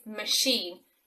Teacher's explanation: The ch sound is actually sh in machine because it comes from French.